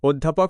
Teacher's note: অধ্যাপক শব্দে এই অ উচ্চারিত হয় মুখ কিছুটা সংকুচিত রেখে, অনেকটা ও এর কাছাকাছি শোনায়। এই ধরনের উচ্চারণকেই বলে সংবৃত।